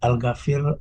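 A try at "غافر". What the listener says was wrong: Pak Gofir aja Pak, nggak pakai al.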